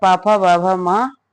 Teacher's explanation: दोनों ओष्ठों के स्पर्श से बोले जाने वाले वर्ण ओष्ठ्य वर्ण कहलाते हैं